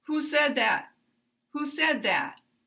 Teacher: And we're going to drop the intonation at the end.